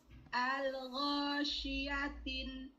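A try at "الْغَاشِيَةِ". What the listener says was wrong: Al-ghasyiyati, nggak ada tanwinnya. Al-ghasyiyati.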